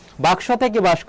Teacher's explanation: যদি নিজেদের মধ্যে স্থান পরিবর্তন করে নিজেদের নিজেদের মধ্যে স্থান পরিবর্তন তাকে বলা হয় ধ্বনি বিপর্যয়